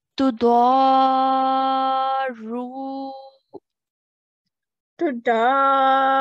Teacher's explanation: And then after the ru, we also have a wow mud. So we're going to stretch the ru sound for 2 counts because of the wow mud, okay? So we're going to say tudaru.